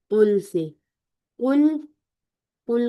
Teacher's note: उल को हमने राउंडिंग और मुफखम ठीक है ऐसे अदा करना है और लाम को हिलाना नहीं है